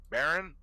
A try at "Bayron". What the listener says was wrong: I pronounced it Bayron. No, because a Baron would not have the Y. It's Bayron. Baron would just be B-A-R-O-N. His name is Bayron. That is how you pronounce his name.